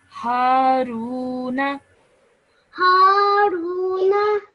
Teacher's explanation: Just make sure you stretch the Ru sound out for 2 seconds because of the Waw Madda.